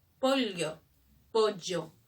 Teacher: El yeísmo es todo lo que es doble L, nosotros lo convertimos al sonido de la Y.